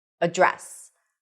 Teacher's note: You can only use one pronunciation and that is address. Stress is on the second syllable.